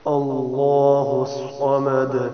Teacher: یہاں بھی لفظ اللہ کو پر پڑھنا ہے، زبان منہ کو گول کر کے تھوڑا سا، اس سے پہلے زبر ہے اس لیے. آگے صمد میں سواد کا خیال کرنا ہے، سین نہ ہو. سواد جیسے ہم بولتے ہیں سواد، ویسے ہی اس کی ادائیگی ہو، اور پھر دال پہ قلقلہ کرنا ہے.